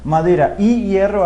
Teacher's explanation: Por ejemplo, madera y hierro, bien, y hago pausa, retomo aire y luego reinicio la sílaba. Madera y hierro hace con que el diptongo no fuerce el rehilamiento